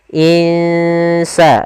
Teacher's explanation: Kita samarkan nunnya ke huruf sin. Insa, dan itu ikhfanya ikhfa tipis.